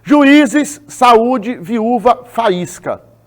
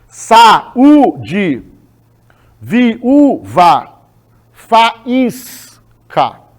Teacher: Veja que a sílaba tônica é a segunda vogal do hiato.